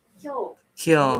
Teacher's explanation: pronounced by gliding to the Y sound and not pronouncing the E sound